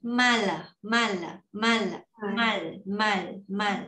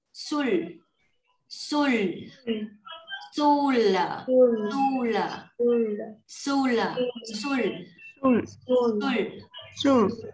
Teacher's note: chữ r này mà nó phụ âm cuối á thì mình sẽ đọc nó là chữ l, m a l, m a l thì mình sẽ đọc nó là mal.